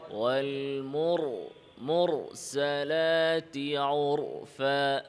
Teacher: রতে আওয়াজ সামান্য জারি রাখতে হবে।